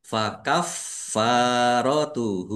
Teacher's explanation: Fnya ada tasdidnya dibaca dobel ditekan biar tampak dobelnya. Fakaffaratuhu fa fathah alif mad thobi'i panjang dua harakat. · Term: dibaca double